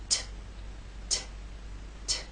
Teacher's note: it's what's known as an unvoiced consonant meaning there is no voice you will feel no vibration when you make the T sound